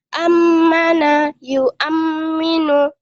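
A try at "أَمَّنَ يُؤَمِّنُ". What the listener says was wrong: Nah, ini gunnah ditahannya. Ammana yu'amminu.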